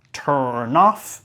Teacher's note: vamos a vincular turn off, como vinculando la N a nof, turn off. Y acá vamos a tener una T media sorda.